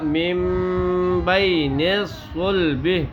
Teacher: نون کی آواز کو بدل کر میم کی آواز بنا دیں گے. من کی بجائے مم. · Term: اقلاب